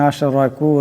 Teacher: রার উপর জবর আছে রাটাকে মোটা করিয়া পড়তে হবে